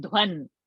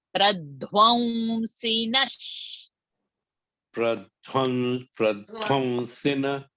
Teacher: I'm not saying dhwan. Sakara is there, so anuswara will become va.